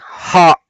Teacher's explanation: ಪೂರ್ತಿ ಕಂಠ open up ಆಗಿ ಪೂರ್ತಿ ಗಾಳಿ ಹೊರಗೆ ಬರುವಾಗ ಅದು ಹ ಆಗುತ್ತೆ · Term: ಹಕಾರ